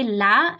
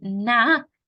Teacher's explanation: we have the tip of the tongue along with the front sides of the tongue so here you have the tip and the sides meanwhile in the letter noon you only have the tip